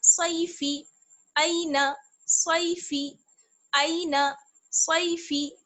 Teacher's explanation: نہ صاد کو کھینچنا ہے اور نہ فا کو کھینچنا ہے، دونوں کو جلدی سے ادا کریں گے.